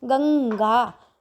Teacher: अनुस्वार हो गया। और ये अनुस्वार होने की वजह से नाक से उच्चारण करना पड़ता है